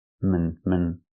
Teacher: The second syllable is relaxed and closed.